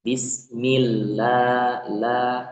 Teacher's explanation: Lafaz Allah dibaca tipis atau tarkik ya